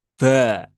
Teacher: logatnya orang Jawa yang mengatakan huruf ba itu dengan ee sedikit menebal ya